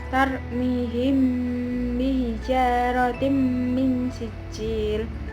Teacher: mim mati bertemu dengan ba dan dibaca samar dan didengungkan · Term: ikhfa syafawi